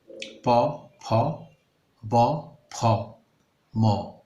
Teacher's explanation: এই ধ্বনিগুলো সৃষ্টির ক্ষেত্রে ওষ্ঠ বা ঠোঁটের প্রত্যক্ষ সক্রিয় ভূমিকা রয়েছে। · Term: প বর্গীয় ধ্বনিগুলো